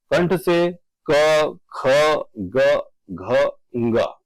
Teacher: घ का उच्चारण स्थान कौन सा है? तो यहां पर घ का उच्चारण स्थान की बात की जाए तो वो यहां पर रहेगा कंठ